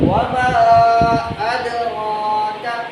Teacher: را تو پر ہے لیکن آگے باریک کاف ہے